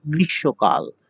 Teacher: সেই ম যার সাথে যুক্ত থাকে সেই বর্ণ ২ বার উচ্চারিত হবে এবং বর্ণটি নাসিক্য হবে। তাহলে শ এর সাথে ২ বার হচ্ছে, স ২ বার উচ্চারিত হয়েছে এবং স-টি নাসিক্য হয়েছে।